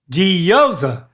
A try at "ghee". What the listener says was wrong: It's not G. Instead of saying J, what's the other way you say the letter G? What other sound does it make besides J?